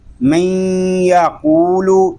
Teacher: نون ساکن کی جو صفت ہے وہ باقی ہے، یعنی غننے کی آواز ناک میں جا رہی ہے۔ تو یہاں پر ایک تو ادغام یار معلوم ہو رہا ہے کہ نون ساکن کے بعد حروف یار معلوم میں سے یا آ گیا ہے، اور دوسرا ادغام ناقص ہو رہا ہے۔